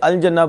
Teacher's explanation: تو نہیں پتہ جیم حروف قمریہ میں سے ہے تو جب قمریہ میں سے لام ظاہر کر کے پڑھیں گے